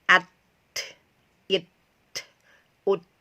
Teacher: Kalau sifat mengalirnya itu sekitar 20% jika dipresentasikannya. Jadi sifat tertahannya lebih besar daripada sifat hamasnya atau udara yang mengalir.